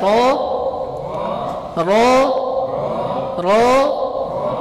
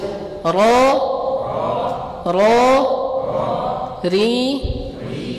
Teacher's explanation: Dari ujung lidah, dari ujung lidah. Dan ujung lidahnya ini menempel di makhraj apa? Menempel di langit-langit. Langit-langit yang dekat dengan makhraj huruf lam dan juga nun, langit-langit yang bagian depan yang dekat dengan gigi seri, gigi dua seri apa, gigi seri atas, gigi dua seri atas, begitu. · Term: huruf ra